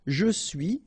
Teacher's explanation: final S not pronounced